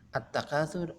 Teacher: alif lam ini dimasukkan atau dilebur ke dalam huruf ta. Karena cara membacanya diidghamkan, maka sering disebut dengan idgham syamsiyah.